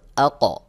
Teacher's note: কফের আওয়াজটা এমনভাবে করতে হবে যেন কফের আওয়াজটা কিছুটা জবরের দিকে ধাবিত হবে, হালকা জবরের মতো করে উচ্চারণ করতে হবে। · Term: কলকলায় কুবরা